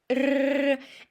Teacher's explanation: you are like let your tongue shiver a little, so it's vibrating